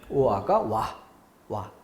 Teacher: 오아가 와가 되는 경우, 지어가 저, 찌어가 쩌가 되는 이런 것들은 긴 소리 발음하지 않는다.